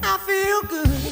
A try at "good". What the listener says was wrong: Stop pronouncing the D in English.